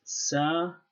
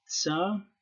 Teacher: this may have been an affricate, so Semiticists aren't sure whether this was pronounced sa or tsa. So I will stick with sa in this video.